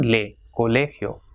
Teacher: So it has got 3 syllables, colegio. So the stress will be on le, colegio.